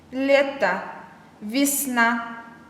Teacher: Буква «е» в ударном положении произносится как «е», в безударном «и».